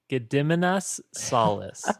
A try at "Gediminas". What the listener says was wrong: You put the emphasis on really weird syllables. I would say this is Gediminas Solis. Gediminas?